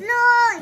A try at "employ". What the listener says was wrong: EM. It start with EMM. Ploy. Yeah.